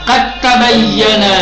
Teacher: پہلا آپ پڑھیں گے قد تبین، غلط کہا کیا کہ جب بھی دال تا اکٹھا ہو، ایک ساکن ہو دوسرا والا متحرک ہو تو پہلے والے کو حذف کر کے دوسرے والے کو تشدید دیں گے، یعنی ادغام کے ساتھ پڑھیں گے